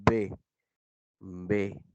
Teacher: por estar elevado el velo del palatar, tienen como caja de resonancia la boca, desde la que sale al exterior el aire. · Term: orales